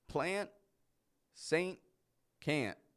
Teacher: are spelled with a t on the end p n t i don't pronounce that T I totally drop it off · Anybody who is listening likely knows that those words are spelt with a T on the end, P-L-A-N-T. I don't pronounce that T. I totally drop it off. Not only do we drop the T, but we also pronounce the N much shorter than our regular N sound.